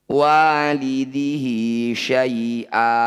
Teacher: Semua bacaan hi atau hu yang dibaca panjang disebut bacaan matsilah qasiroh. Cara bacanya hi panjangkan 2 harokat atau 1 ayunan.